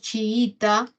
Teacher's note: las vocales altas cerradas están repetidas y se separan por hiato simple